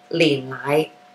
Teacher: But if you're talking about condensed milk, you'd be saying lin lai, right? Down low for the lin and then back up lai, lin lai. Okay, the lin lai is your condensed milk.